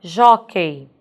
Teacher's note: Última sílaba é esse key, não é a mais forte, então a nossa sílaba mais forte é o jó